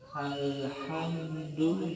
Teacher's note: Maka lam sukun dibunyikan dengan jelas, diidharkan, dibaca dengan idhar qamar.